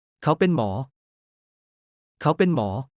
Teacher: pen sounds like pain without extending the vowel sound.